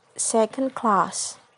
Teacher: the primary stress is on the second word and the secondary stress is on the first word like in a word second class the primary stress is on